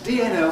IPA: dn̩l